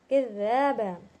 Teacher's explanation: ذال کو تھوڑا سا زبان باہر نکالیں گے، زا کی آواز اندر سے نکلتی، ان کی زبان باہر نہیں نکلتی، اور اس کو ہم کھینچیں گے۔